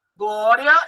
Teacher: Glória, eu tenho um ditongo crescente. O I é mais fraco do que o A, então eu subi aí.